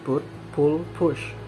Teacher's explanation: the nearest cardinal vowel is number eight but it can be seen that is more open and nearer to central